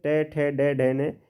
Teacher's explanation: ट ठ ड ढ अण ठीक है साथियों तो ये पांचों किसमें आते हैं मूर्धा में आते हैं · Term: ट वर्ग